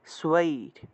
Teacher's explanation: দন্তীয় স্বয়ের নিচে বফলা থাকায় সুয়া উচ্চারণ